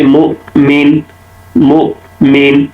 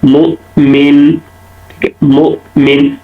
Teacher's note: جیسے مثال دیکھ لیتے ہیں، جیسے مؤمن، مؤمن، اب مین کے بعد جو حمزہ ہے تو حمزہ میں کیا ہوگا، مؤمن، مؤمن، حمزہ کی آواز بلند ہو رہی ہے، اس کو کہتے ہیں جہر۔